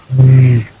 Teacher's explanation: when you say v there is vibration in your vocal cord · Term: voiced form